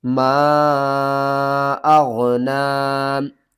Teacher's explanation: میم الف مد زبر ما، چھوٹی مد ہے، 3 الف کے برابر کھینچ کر آپ نے پڑھنا ہے۔ الف سے پہلے زبر ہے، حروف مدہ ہے، 1 الف کے برابر اس کو بھی کھینچنا ہے۔